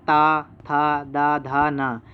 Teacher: यह सभी दंत हैं और ये सभी दांत और जीभ से स्पर्श से बोले जाते हैं